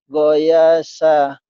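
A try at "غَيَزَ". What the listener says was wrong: Bukan goyasa. Goyaza. Z. Zaitun. Zainab. Goyaza.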